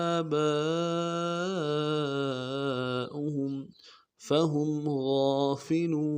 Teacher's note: ہے، آگے اس کو ایک الف مقدار میں کھینچ رہے ہیں، با کے اوپر مد اصلی ہے، اس کو کم سے کم 3 الف سے لے کے زیادہ 7 الف تک کھینچنا ہے